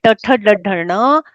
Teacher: जीभ मुड़कर ऊपर मूर्धा का स्पर्श करती है। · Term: मूर्धन्य वर्ण